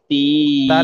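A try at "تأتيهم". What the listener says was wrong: নয়, তাল নয়। হ্যাঁ, হাত্তা তা তিয়া, তা তিয়া। হাত্তা তা তিয়া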